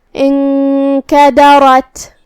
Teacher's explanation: اخفاء کا معنی ہے چھپا دینا، تو ہم یہاں نون کو بغیر ظاہر کیے ہوئے چھپاتے ہوئے لیکن غنہ کے ساتھ یہ حکم کو ادا کریں گے · را پہ زبر ہے تو یہاں بھی ہمیں را کو بھاری آواز میں پڑھنا ہوگا کیونکہ اس کا حکم ہے تفخیم. آخر میں ہم تا کو ہمسے سے ادا کریں گے کیونکہ یہاں تا ساکن ہے.